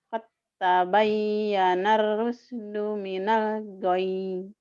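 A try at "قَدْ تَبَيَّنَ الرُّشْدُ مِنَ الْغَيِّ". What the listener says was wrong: Nanti tinggal sinnya dilatih ya. Sama entek-enteknya dihilangin. Qad tabayyana shinnya nggak keluar. Qad tabayyana rusydu minal ghayy.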